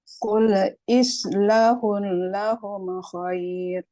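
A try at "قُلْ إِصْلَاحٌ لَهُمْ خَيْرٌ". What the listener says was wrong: Panjang. Qul islahul panjang.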